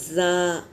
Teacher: ज़ा सीटी वाला हर्फ है ज़ा। सीन पहले सीटी बजेगी फिर हर्फ अदा होगा सीन।